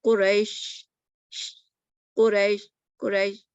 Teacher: تو پھیلنا جس حرف میں صفت پائی جائے اس کو متفشی کہتے ہیں، اور وہ شین ہے جس کو ادا کرتے وقت آواز مخرج میں پھیل جاتی ہے